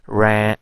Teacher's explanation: when a vowel is followed by a nasal consonant, so usually that vowel also adopt the nasalization